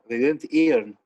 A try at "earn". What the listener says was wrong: Earn, not Ian. Earn.